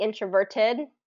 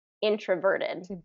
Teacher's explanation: British English always pronounces that t introverted but American pronunciation is always changing that t to a d